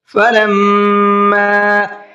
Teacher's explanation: فَلَمَّا میم کے اوپر تشدید ہے، غنہ کریں گے